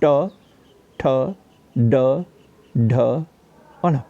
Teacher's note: कठोर तालु के मध्य का भाग मूर्धा कहलाता है। जब जीवा की उल्टी हुई नोक का निचला भाग मूर्धा से स्पर्श करता है तो उसे मूर्धन्य व्यंजन कहते हैं